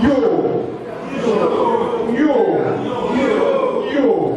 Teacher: But then you can also have falling tones, such as in, again, Yoruba, yo.